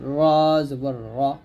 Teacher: র জিহ্বার আগার উল্টা পিঠ তার বরাবর উপরের তালুর সঙ্গে লাগবে